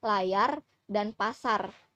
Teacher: Trill yang dapat ditemukan pada tabel fonem yaitu trill alveolar yang berbunyi R. Bunyi R merupakan bunyi bersuara